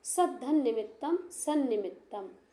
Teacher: पर पंचम वर्ण मतलब पंचम वर्ण में परवाह पर भाग में निमित्तम शब्द के प्रारंभ में नकार है जो कि तकार का पंचम वर्ण है और पूर्व भाग के अंत में तकार है। तो यह नकार के कारण यह तकार नकार में बदल जाएगा।